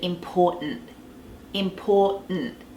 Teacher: that T at the end it can be silent but generally there's the smallest sound there it's like you place your tongue for the T important and